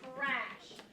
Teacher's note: watch my mouth you have to watch my mouth a trash when we put that T and R together it sounds like a CH remember we talked about that okay so trash has four sounds